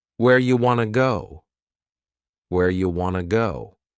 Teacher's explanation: You becomes you and want to becomes wanna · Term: reduction